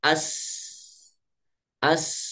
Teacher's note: memiliki sifat Hames maka pita suaranya terbuka